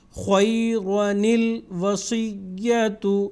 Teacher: نون قطنی اس وقت پڑھا جائے گا جب الف کو حذف کر کے دونوں کو جوڑ کے پڑھیں گے